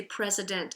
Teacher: as we speak we tend to speak quickly through those non accented syllables turning that sound into an uh · it's a schwa o because there's no accent on that part of the word